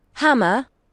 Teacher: A rising terminal at the end.